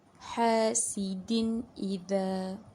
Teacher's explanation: Bermaksudnya di sini da berjumpa dengan alif A, tanwin tersebut dibaca dengan jelas tanpa dengung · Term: izhar